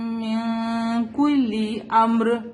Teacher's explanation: نون ساکن کے بعد کاف ہے، حروف اخفا ہے، تو ہم نون کو ہائڈ کریں گے